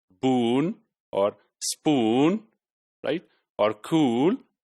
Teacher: the tongue is very close to the roof of the mouth and it is pronounced from the big part of the tongue